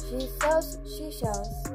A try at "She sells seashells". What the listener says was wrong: Nope, you paused too long. You paused too long.